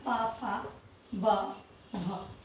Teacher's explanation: इनको बोलते समय ये ओठ से निकलते हैं और किसी भी भाग से नहीं निकलते हैं, इसलिए ये हमारे ओष्ठ वर्ग के वर्ण कहलाते हैं।